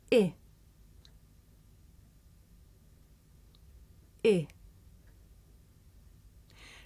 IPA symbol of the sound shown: ɪ